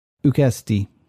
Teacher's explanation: It has an accent on its penult,